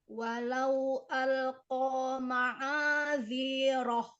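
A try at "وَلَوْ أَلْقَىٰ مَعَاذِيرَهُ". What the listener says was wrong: Ziroh. Alirkan lagi ke depan, keluar. Ma'adhiroh.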